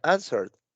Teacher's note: pareciera que aquí estoy omitiendo la letra e y estoy juntando la r con la de